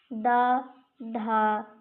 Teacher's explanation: दा का उच्चारण स्थान दंत है। द, ध दंत होते हैं।